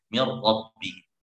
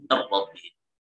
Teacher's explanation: Maka ya kemudian idgham bila gunnah, mir rabbihim. Itu tidak ada gunnah, idgham kamil langsung mir rabbihim.